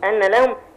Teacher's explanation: ان لهم الهمزه محققه طبعا عشان همزه قطع والنون مشدده بمقدار حركتين. واللام مظهره.